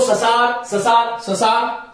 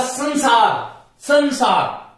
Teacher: अनुस्वार का उच्चारण स्थल जो है वो केवल नासिका है अनुस्वार नासिका से बोला जाता है